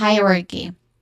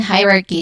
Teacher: the first syllable has a diphthong sound, I.